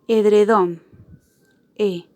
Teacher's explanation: su acento ortográfico está en su última sílaba y que por eso decimos que la sílaba tónica de esta palabra es don